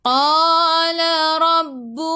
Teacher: Ra baca dengan tebal. Ra baris atas tafkhim.